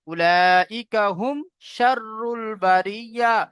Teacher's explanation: তো মিম সাকিনের পরে মিম অথবা বা ছাড়া যদি অন্য কোনো অক্ষর আসে তাহলে সেখানে ইজহারে সাফাবি হয়, অর্থাৎ মিমকে বিনা গুণনা জাহির করে তাড়াতাড়ি পড়তে হয়।